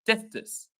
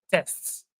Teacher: There is no gap between T and S.